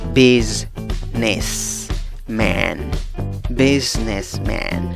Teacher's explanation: Aunque la escritura es con una S, la pronunciación es con una Z. En la segunda sílaba empiezas a pronunciar la palabra con una N y luego con la vocal schwa, la vocal débil, A, que no es A, ni E, ni O. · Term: sonido de una Z